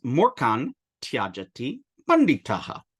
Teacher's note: Remember, we're looking at that na, and it encounters an unvoiced ta, so it becomes anuswara and has the organic, similar, homoorganic sound, the sa, inserted as well.